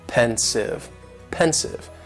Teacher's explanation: just two syllables and the stresses on that first syllable